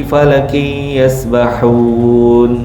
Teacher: tanwin bertemu dengan fa dengung dua harakat ikhfa hakikiy